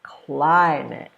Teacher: climate has two syllables and this rule says you stress the first one